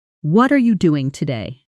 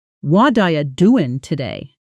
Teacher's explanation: doing loses its G sound becoming doing. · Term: connected speech